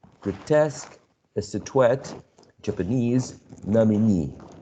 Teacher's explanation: according to the rule we are following or we're learning the stress should be placed on the last syllable